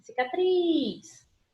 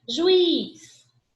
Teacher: última sílaba mais forte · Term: sílaba tônica